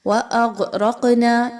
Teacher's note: غین، را اور قاف کی تینوں جو حروف ہیں یہ موٹے پڑھے جائیں گے۔ غین اور قاف حروف مستعلیہ میں سے ہیں، ان کو پر پڑھا جائے گا، اور را کے اوپر چونکہ زبر ہے اس لیے اس را کو پر پڑھا جائے گا۔